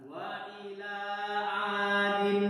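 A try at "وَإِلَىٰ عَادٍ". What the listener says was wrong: Nah, seperti itu. Lanjut.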